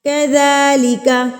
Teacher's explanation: ذال کھڑی زبر ذا ہے، اس کو ہم ایک حرکت کے برابر کھینچ کے پڑھیں گے